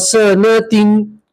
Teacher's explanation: گولتا کے اوپر ہم وقف کریں گے تو گولتا کو ہم ہا سے بدلیں گے اور ہا کے اوپر جزم پڑیں گے